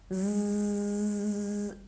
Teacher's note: when we pronounce we really feel the vibration of our vocal cords · To understand this, try to put your fingers here on your throat like this and try to say, we will try with z, s, because they are long to pronounce. When we pronounce z, we really feel the vibration of our vocal cords.